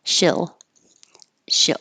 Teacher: doesn't have to sound like a perfect e it can sound like the little bit lower e and that makes it a little more simple instead of she